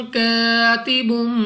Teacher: अलिफ से पहले जबर अलिफ मद्दा 2 सेकंड तक लंबा करना है